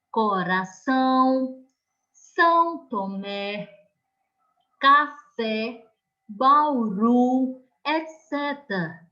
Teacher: você pode analisar que a sílaba mais forte é a última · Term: oxítonas